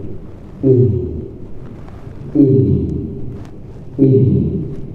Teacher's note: dia keluar di aqsal halqi sama dengan ha sama dengan hamzah tadi yaitu di pangkal tenggorokan